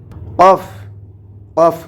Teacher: জিহ্বার গোড়া তার বরাবর উপরে তালুর সঙ্গে লাগাইয়ে উচ্চারণ করতে হবে